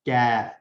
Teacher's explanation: منہ کی جانب تالو سے لگا کر باریک آواز میں کاف ادا ہوتا ہے، باریک آواز میں کیف.